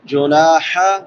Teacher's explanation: چھوٹی ہا ہے، وسط حلق سے، حلق کے درمیان سے